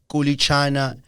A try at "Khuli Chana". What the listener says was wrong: He always says Khuli, and it's a KH.